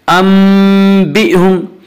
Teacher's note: اس کا قاعدہ یہ ہے کہ نون ساکن اور تنوین کے بعد اگر با آئے تو وہاں پہ قلب ہوگا، یعنی نون ساکن اور تنوین کو میم سے بدل کر غنہ کے ساتھ پڑھیں گے۔ یہاں نون ساکن کے بعد با رہا ہے، اس لیے نون ساکن کو میم سے بدل کر غنہ کے ساتھ پڑھیں گے۔